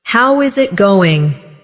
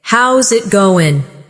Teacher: Instead, "How is it going?" becomes "How's it goin'?" The is disappears, and the final G in going often softens. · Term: connected speech